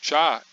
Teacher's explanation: Porque na verdade esses dois sons são o que nós chamamos de plosivas africadas, que é uma mistura de dois sons, são dois sons feitos ao mesmo tempo. No caso do chá, é o som do tá e do chá feito ao mesmo tempo